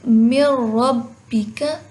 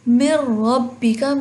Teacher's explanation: تو دیکھیں من ربک، بیسیکلی ہو ادغام ہی رہا ہے۔ من ربک، میم کو را کے ساتھ ملا کے پڑھے ہیں